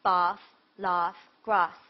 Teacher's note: if you were saying the words like laugh and bath and grass they would be lengthened with the long R sound